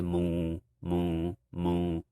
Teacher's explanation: you notice how my tone drops so s is just a flat low tone · The S tone is low, as you can tell. If I talk monotonously and then I just say mu, mu, mu, you notice how my tone drops.